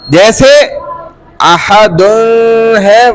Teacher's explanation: تنوین پر وقف کی حالت میں تنوین نہیں پڑھی جاتی, یعنی کہ نون نہیں پڑھا جائے گا